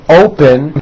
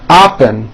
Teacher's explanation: Many foreign speakers do not pronounce the American O correctly, and very often the O sounds like an ah. So for example, the word open sounds like oppen, and there's no such word and people may not understand you.